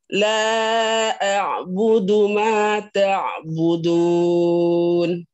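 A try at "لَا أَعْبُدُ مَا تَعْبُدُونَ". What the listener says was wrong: Kurang panjang dikit lagi. La-nya.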